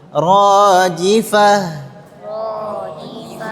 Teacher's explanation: Ta marbutah ketika dia waqaf ketika waqaf maka berubah menjadi ha dan huruf ha itu huruf yang lembut. Lembut ya dibacanya lembut.